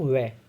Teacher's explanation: तो दांत और होठ मिलके बना रहे हैं वै को। आप खुद भी बोल के देखो वै, तो दांत और होठ टच हो रहे हैं।